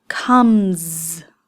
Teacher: M at the end of the word come is a voiced sound. There's a vibration. There's no air that comes out at the end. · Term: z sound